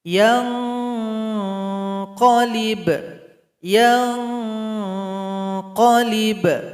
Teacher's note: Ikhfa berikutnya pada ayat yang keempat, di sini ada nun sukun berjumpa dengan qaf, ikhfa adna. Jadi dengungannya mengarah kepada huruf qaf. · Bunyi ikhfanya mengarah kepada huruf qaf atau mengarah ke tempat keluar huruf qaf yang berada di pangkal lidah. Jadi bunyinya ang.